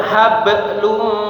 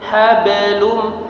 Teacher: Huruf ba sukun di tengah-tengah kalimat ya. Pantulannya kecil.